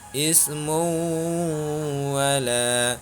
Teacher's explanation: Cara membacanya dibaca berdengung karena hukum bacaannya adalah idgham bi gunnah. Alasannya karena huruf mim berharkat dhammah tanwin bertemu dengan waw.